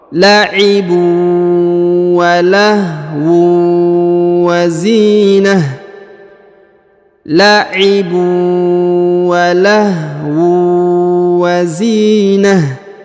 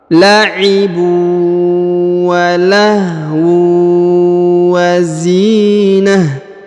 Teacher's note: Ditahan tekan kemudian huruf tanwinnya melebur menghilang ke huruf waw.